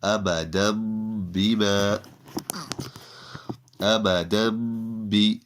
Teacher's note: Here, after the tanween, the do zabar, the letter ba appears. So the sound of the noon from the tanween, from the do zabar, will be turned into a meme